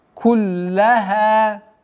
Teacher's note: После удвоенной лям, удлинение в размере двух огласовок фатхи.